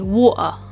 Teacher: the tea is almost removed entirely and instead it's replaced by this tightening in the throat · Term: glottal stop